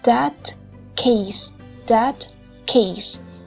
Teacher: khi mà mình đọc that thì đầu lưỡi của mình phải để lên trên nướu để phát âm t. Sau đó thì mình hạ cái lưỡi xuống, rồi cuốn lưỡi sẽ đưa lên đụng ngay cái chỗ ngạt mềm để đọc âm k.